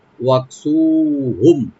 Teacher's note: কাপটাকে এখানে একটু হামস করবো, ওয়াক সু একালিফ টানবেন, হুম এখানে মিম সাকিন এজাহার করবো আমরা, এখানে কোনো গুণ হবে না, ওয়াকসুহুম।